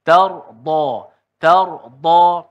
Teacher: elakkan dad itu disebut sepertimana dal yang ditebalkan · Kalau dekat sini alif pada tard tu tebal. Jadi jadi tebal mad tu sebab huruf sebelumnya dad yang tebal. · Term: huruf dad